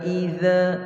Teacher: za sama dengan tha, hujung lidah kita, hujung gigi depan